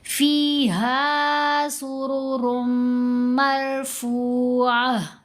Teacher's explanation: سرورم را کو میم سے ملائیں گے تو غنہ کریں گے